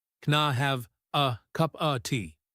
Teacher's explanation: The a in can disappears.